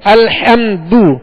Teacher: لہذا اس بات کا خیال رکھیے کہ الحمد، حمد اور میم پر جزم ہے تو یہاں قلقلہ نہیں کریں گے، سکون کے ساتھ ادا کریں گے، جماؤ کے ساتھ ادا کریں گے. الحمد، دال پر پیش ہے، بغیر کھینچے بغیر جھٹکا دیے معروف پڑھیں گے، ہونٹوں کو گول کر کے. الحمد، الحمد نہیں پڑھیں گے، الحمد نہیں پڑھیں گے، یہ مجھول ہو گیا، بلکہ الحمد یوں پڑھیں گے.